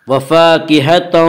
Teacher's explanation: الف مدہ کو 1 الف کے برابر کھینچ کر پڑھیں گے